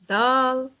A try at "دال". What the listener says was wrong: not دال دال is soft soft دال it's a soft letter so دا دا دا دا like دلال like دلال دال